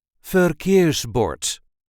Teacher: there is a light emphasis on the second syllable